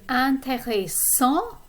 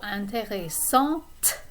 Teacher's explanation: You pronounce the T in the feminine form.